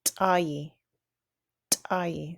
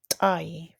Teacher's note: So you can hear how you kind of hold your breath and release it. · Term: ejective